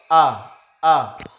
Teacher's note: hamzah ini tempat keluarnya atau makharijul hurufnya itu di tenggorokan yang paling dalam, yang paling bawah. A. Jadi ada dua huruf yang keluar dari tenggorokan kita yang paling dalam, yaitu A dengan H.